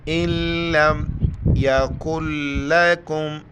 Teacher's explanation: لام کی شد کی وجہ سے نون کو ہم اگنور کریں گے، حمزہ کی زیر کو ڈائریکٹ لام کے ساتھ ملائیں گے